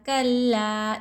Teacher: الف سے پہلے زبر, الف مد ہو رہا ہے, ایک الف کی مقدار لا میں کھینچنا چاہیے